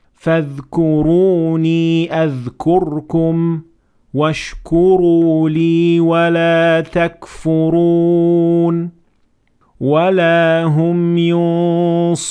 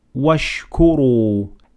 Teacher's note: several examples of Ra that has to be pronounced full mouth because it has Dhamma on top of it